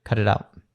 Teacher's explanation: The flap T happens twice there